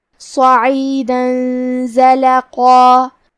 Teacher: آخری میں دال پہ تنوین زبر ہے، پھر زے آتا ہے. کلمت زلقا میں زے حروف الاخفاء میں سے ہے تو ہم یہ حکم کو غنہ کے ساتھ ادا کریں گے